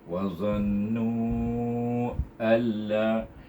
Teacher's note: Nun sakinah bertemu dengan huruf lam yang bertasydid. Itu huruf lam adalah huruf idgham tetapi tidak boleh didengungkan. Idgham saja.